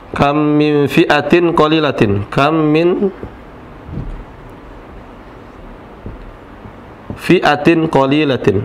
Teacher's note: ketentuannya menjadi idghamun apa idgham itu huruf yang pertama ini melebur huruf yang pertama melebur ya kemudian menjadi huruf yang kedua atau dibaca menjadi satu huruf saja